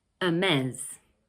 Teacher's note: Okay, in this next brand, we don't pronounce the H at the beginning of the word, like in French actually. The word has 2 syllables and the second one is stressed.